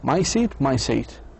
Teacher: the consonant sound, the s sound is shared equally between both words in both the phrases